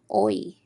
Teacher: Our final diphthong of the day is oi. Now, oi is created when the lips move from an oval to slightly parted and spread